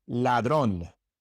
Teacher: The difference is that you make your tongue tense. In English, your tongue is relaxed as you pronounce the L. In Spanish, it is tense.